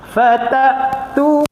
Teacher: hamzah pula dia tak ada mana-mana hams, angin semua tak ada. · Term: syiddah hamzah